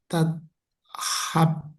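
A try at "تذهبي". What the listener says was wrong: betul, tazhab, tapi ada i-nya. Nah, gimana cara bacanya? Tazhab, habi Ini kan ba di belakang. tazhabi.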